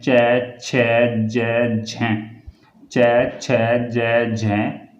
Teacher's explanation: जीभ अपने उच्चारण स्थान को स्पर्श करती है, फिर थोड़ा उच्चारण स्थान से दूर हो जाती है और वायु घर्षण करते हुए बाहर निकलती है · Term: सपर्श संघर्षी व्यंजन